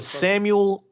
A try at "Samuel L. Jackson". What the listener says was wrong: It's not Samuel. It's Samuel L. It's 2 things. There's an L at the end of Samuel, and an L for the last name.